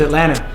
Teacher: When it's spelled, it's like Atlanta. Right. But we don't say the T.